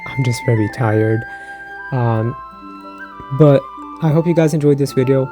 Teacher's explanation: have to talk a lot at work so I'm very sorry my voice is more deep more raspy and more breathy than usual